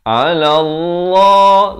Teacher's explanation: Ala Allah lafz jalalah ini dibaca tebal 2 harakat